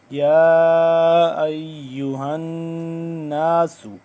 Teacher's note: یا، 2 سے 3 الف کے برابر لمبا، یا ایہا الناس، ہا نون زبر ہن، نون الف زبر نا، نون مشدد ہے، اس پہ ہم کریں گے غنہ کریں گے